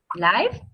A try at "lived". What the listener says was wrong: The verb is live. Live. Lived. D, no? Lived.